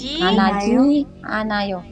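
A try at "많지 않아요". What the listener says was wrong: bukan manaji, manji. Manji, kalau manaji kan manada ketemu gitu ya.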